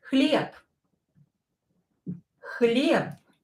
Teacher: I have b here, and it is located at the end of the word, so I will pronounce it as p.